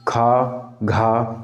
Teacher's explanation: तो हवा ज़्यादा निकलती है तो वो है महाप्राण